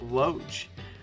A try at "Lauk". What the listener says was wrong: You would need to place the O and the A differently, like replace them with each other, for that to do Loach. It's Lauk.